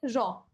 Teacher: যে ধনি উচ্চারণের সময় জীব একাধিকবার অতি দ্রুত দন্তমূলকে আঘাত করে বায়ুপথে বাধা সৃষ্টি করে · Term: কম্পিত ব্যঞ্জন